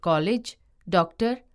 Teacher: इसका उच्चारण आ तथा ओ के मध्य की ध्वनि औ के रूप में होता है। इसका प्रयोग अंग्रेजी से हिंदी में आए अनेक शब्दों में होता है, जैसे कॉलेज, डॉक्टर आदि। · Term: आगत